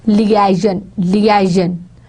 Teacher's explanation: If we are going to pronounce it in American English, we are going to put stress on lia. It's on liaison, liaison.